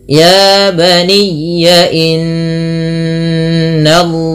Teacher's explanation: Pada lafal inna di sini ada bacaan gunnah yang dimana suara n-nya ditahan 2 harakat, tidak hanya sekedar inna tapi ditahan bunyi n-nya.